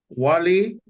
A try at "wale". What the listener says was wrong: Wale. You said Wali. No, you say Wali. It's Wale. Wale, not Wali. yes, Wale. Yes, Wale. Yes, Wale. No, you would also say E again as E. It's not I, it is E.